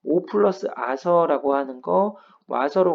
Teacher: 오 플러스 아서가 와서가 되는 건 축약을 통해서 강제로 줄이는 거예요.